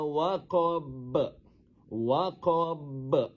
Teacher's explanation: Dengar huruf ba tu, kita besarkan bunyinya. Kita kita pantulkan bunyinya dengan pantulan yang besar kerana dia berada di hujung ayat. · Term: qalqalah kubro